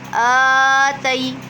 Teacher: دیکھیں آ کو ہم کھینچیں گے کیونکہ آ پر کھڑی حرکات ہے۔ تی پہ یا سکن سے پہلے زبر ہے تو یا لین ہو رہا ہے